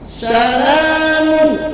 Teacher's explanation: Salamun, mun ada dhammah tain atau tanwin dhammah bertemu dengan huruf ha, maka dibaca jelas, itu disebut ijhar halqi. Dibacanya jelas, berbunyi huruf n, tidak boleh eng, tapi n jelas dibacanya, nunnya jelas.